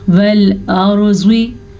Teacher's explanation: रॉ साकिन से पीछे हर्फ पे ज़बर है तो रॉ को हम पुर पढ़ेंगे। ज़्वाद को भी पुर पढ़ेंगे क्योंकि ज़्वाद मैंने भी बताया था हरूफ जो वो पुर पढ़े जाने वाले हरूफ हैं उनमें शामिल है।